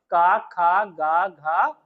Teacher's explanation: जो ध्वनियां कंठ को टच करके निकलती हैं और फिर उसके बाद बाहर आती हैं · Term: कंठ ध्वनि